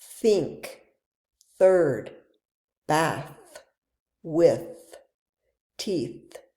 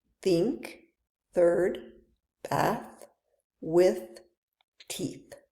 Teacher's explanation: In the unvoiced th, your vocal cords don't vibrate and you should feel air being pushed out between your teeth.